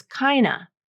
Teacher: He drops that D in kinda and says kinda.